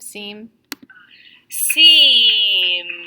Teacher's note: I have a really drawn out pronunciation of seem